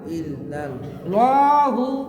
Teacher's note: ইল্লাল্লাহু এই একটা জায়গায় মোটা হবে, বাকি সব জায়গায় পাতলা।